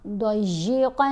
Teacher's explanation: تو اب ہم نے قن میں جو نون ہے اس کو واضح بھی کرنا ہے نون کی آواز کو اور جلدی بھی پڑھنا ہے. ضاد کو بھی موٹا پڑھیں گے، قاف کو بھی موٹا پڑھیں گے